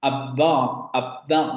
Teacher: porque el aire no sale en la B, sale en la vocal que le sigue. El fonema no tiene, el fonema no presenta aire.